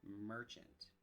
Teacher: Instead of the short A sound, we use the schwa short U sound.